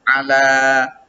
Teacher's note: mad pada huruf lam. Lamnya itu dipanjangkan, ya, satu alif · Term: mad asli